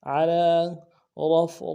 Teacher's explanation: را کو موٹا کریں گے، فا کے ساتھ ملانا ہے، اگلے را کو موٹا کریں گے